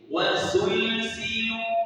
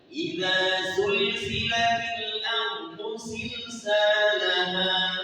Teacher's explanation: Kalau sin itu hamas, kalau zai jar.